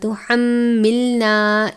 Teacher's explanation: یہاں پر میم مشدد ہے، میم مشدد پر غنہ کریں گے. غنے کی مقدار ایک الف کے برابر ہے، آپ نے زیادہ مختصر یا زیادہ لمبا کر کے نہیں پڑھنا.